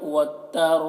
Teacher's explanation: अब यहाँ पर मीम, ये जो छोटी सी मीम है नून के ऊपर, इस मीम को पढ़ेंगे गुन्ना के साथ में और नून को नहीं पढ़ेंगे, मीम इस तरह, मीम बैनिस सुल्बि, नून को सौद से मिलाकर और सौद को सुल्बि सख्त आवाज़ में, सुल्बि वत्तराइब। रॉ को यहाँ पर पुर पढ़ते हैं और खींचते हैं, मद है तो वत्तराइब, बा में कलकला भी हो रहा।